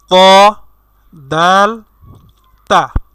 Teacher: 11 নম্বর মাখরাজটি হচ্ছে জিহ্বার আগা বা সামনের অংশ ও ঠিক বরাবর দুই দাঁতের আগার সঙ্গে লাগাইয়া, অর্থাৎ সামনের উপরের দুই দাঁতের যে আগা আছে সেই আগার সঙ্গে লাগাইয়া 3টি হরফ উচ্চারণ করতে হবে। সেই 3টি হরফ হলো ত, দাল, তা।